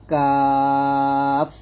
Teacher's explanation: 5 নং মাখরাজ জিহ্বার গোড়া হতে বা জিহ্বার গোড়া থেকে একটু আগে বাড়িয়ে তালু বরাবর উপরে তালুর সঙ্গে লাগিয়ে কাফ পাতলা করে উচ্চারণ করতে হবে,